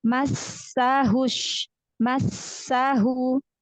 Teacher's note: Sin, huruf sin, itu ujung lidah hampir ketemu gigi sari bawah.